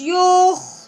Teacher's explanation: खौ को हलक से निकालना है, थोड़ी सी रगड़ के आवाज